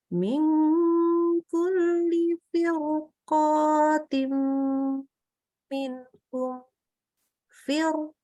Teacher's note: kita sukun tapi ketemu qafnya fathah maka dibaca roknya tebal